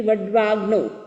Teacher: आ और अ मिलकर के आ बनता है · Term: संधि